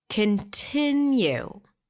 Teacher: the primary stress here is on the second syllable